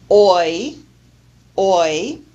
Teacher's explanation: We start with a vowel that begins at the very back low area, and the tongue moves up and forward all the way to the front of the mouth in the high area of the vowel quadrant. This is the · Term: dip thong oi, diphthong oi